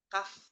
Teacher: Kaf itu di pangkal lidah kaf, dan dia ada aliran udara keluar ya